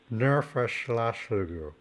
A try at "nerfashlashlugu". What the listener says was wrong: Yeah, but the ner, you don't really need the R in there. Ner, It's a very soft R, like it's almost an H. No verschlagslugu. Well, that verschlagslugu, you can sort of swallow that final syllable. Verschlagslugu. Like in of course we get into regional pronunciation. So in Nuuk they tend to chop off the end of the word. So it's Qinngorpaatit verschlagslugu, no verschlagslugu.